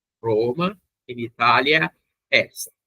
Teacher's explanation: a marcação desse adjunto adverbial é justamente esse a mais longo